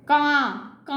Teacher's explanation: नाक से भी साउंड आ रही है और मुंह से भी साउंड आ रही है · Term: चंद्र बिंदु